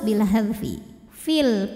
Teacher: panjang dua harakat Fi namun dibaca panjangnya hanya saat berhenti saja kalau wasal pendek fil karena apa Karena gugur huruf madnya sebab ada pertemuan dua sukun Ya Sukun pertama Ya Sukun sukun kedua lam sukun sukun ketemu